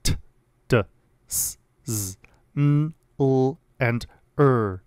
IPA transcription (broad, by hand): t, d, s, z, n, l, and ɹ